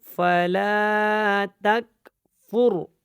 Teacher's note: یہاں پہ کاف کے اوپر قلقلہ نہیں ہے، یہ کاف باریک ہے